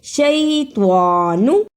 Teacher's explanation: شیطان، توا کو موٹا پڑھنا ہے، توا پر کھڑی زبر ہے، اس کو بھی ادا کرنا ہے۔